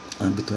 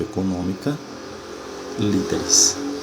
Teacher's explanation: A sílaba tônica é a antepenúltima, portanto, ela é uma palavra proparoxítona. E como toda palavra proparoxítona tem acento, âmbito é acentuado.